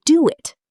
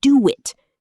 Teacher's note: The little W just slides in there like it was always supposed to be there.